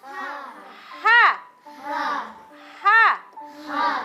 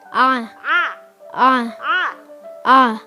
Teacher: cara membedakannya adalah ada anginnya dengan tidak ada anginnya